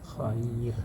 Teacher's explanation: Itu ya sukun. Jadi kalau misalnya ro pun yang sebelumnya didahului ya sukun, maka dibaca kasroh, dibaca tipis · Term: ro yang dibaca tipis